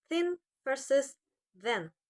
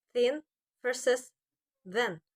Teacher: The is voice dental fricative. Both sounds are made by placing the tongue between the teeth. T is voiceless.